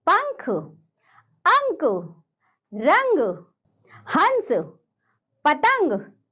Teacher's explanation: अनुस्वार का उच्चारण नाक से किया जाता है,